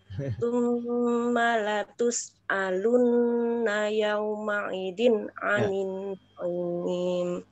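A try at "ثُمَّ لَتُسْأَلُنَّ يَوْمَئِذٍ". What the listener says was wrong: Yauma i-nya kurang dalam. Jadi i sudah dalam, i lebih dalam lagi. yauma i zin a naik ke atas. I itu di bawah tenggorokan sini.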